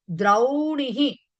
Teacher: ఈ ద్రో ఓకారం కాస్త ద్రౌ ఔకారం కింద మారింది